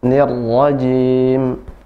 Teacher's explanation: untuk huruf ra tidak boleh getarannya lebih dari dua getaran aja. Cukup 2 getaran. Nirrajim, nirrajim, tidak dilepas dia.